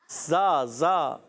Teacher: जबान का सिरा और ऊपर के दांतों के किनारे से अदा होता है